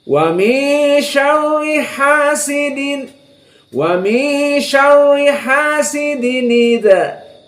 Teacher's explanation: bertemu dengan Hamzah maka hamzahnya dibuang harakat Hamzah yang kasrah dimasukkan kepada tanwin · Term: naqal